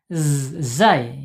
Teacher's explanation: Makhrajnya ada di ujung lidah ya. Ujung lidahnya menyentuh gigi seri bawah.